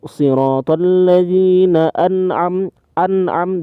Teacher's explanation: diperjelas hurufnya karena ini izhar nun mati bertemu dengan ain